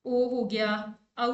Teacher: जिस स्वर के उच्चारण में हमारी जो जीभ की नोक होती है ना, वो पीछे की ओर जाती है, तो उसको हम पार्श्व स्वर कहते हैं